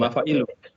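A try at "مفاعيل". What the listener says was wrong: Beda. Kalau yang dal ini ada ya-nya. Jadi manadilu, panjang dia i-nya. Kalau yang jim jidu. Nah, betul, mafa'ilu. Yang dal ya, ada ya. Betul, i-nya panjang.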